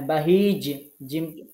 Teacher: জিমটা শক্ত করে কলকলা করবেন সুন্দর করে